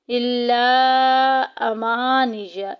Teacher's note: मद मुनफसिल हो रहा है, 2-2.5 अलिफ के बराबर लंबा करेंगे। इल्ला अमानिया, अमा में अलिफ पीछे ज़बर अलिफ मद्दा का कायदा जारी हो रहा है, एक अलिफ के बराबर लंबा करेंगे।